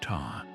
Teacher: consonants grouped by where the tongue touched the mouth. Gutturals like car, palatals like char, dentals like tar.